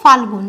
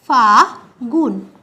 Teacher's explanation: যেহেতু শব্দের মাঝে একটা ল ছিল সেটা লোপ পেয়েছে তাই এটাকে বলা হচ্ছে মধ্য তাই এটাকে বলা হচ্ছে মধ্য ব্যঞ্জনালোপ